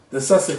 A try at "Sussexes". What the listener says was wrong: Sussex with an ES.